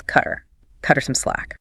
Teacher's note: the mouth simply skips the high-effort H entirely. The sharp T from cut links directly to the air vowel sound of the pronoun.